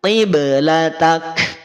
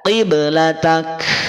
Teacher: Karena pada sisi suara, huruf kaf itu diputus suaranya. Maka tidak dibaca qiblatak. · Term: percikan nafas